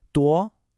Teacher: 多 has a rising second tone, like you're asking a question.